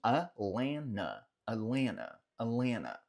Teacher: Você vai ouvir também, principalmente do pessoal que é de lá, nenhum dos T's sendo pronunciado. Então pode ser que você ouça um Atlanta, Atlanta, como se fosse um Atlanta, Atlanta, Atlanta.